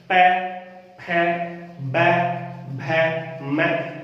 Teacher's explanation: कोई दिक्कत नहीं है, आगे चलते हैं। प, अब प का उच्चारण करने के लिए आपको दोनों होठों को मिलाना जरूरी है, मिलाना पड़ेगा। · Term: ओष्ठ्य व्यंजन